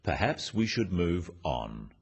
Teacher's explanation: The first one, "Perhaps we should move on," is phrased as a suggestion, but it is said in a firm way with a falling intonation at the end.